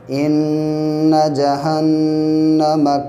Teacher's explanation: نون پہ تشدید ہے، اس لیے ناک میں آواز کو تھوڑی دیر روکیں گے